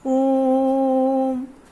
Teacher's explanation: प्लुत स्वर में दीर्घ स्वरों से भी अधिक समय उच्चारण में लगता है, क्योंकि इसे बहुत ही खींच कर बोला जाता है।